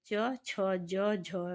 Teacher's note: तो इनका उच्चारण स्थान तालव्य है।